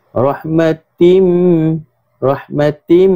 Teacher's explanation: Idgham ma'al ghunnah. Maknanya bacaan dia dengung. 2 harakat.